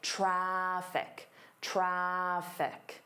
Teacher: you don't want to hear the R. You want to hear the vowel.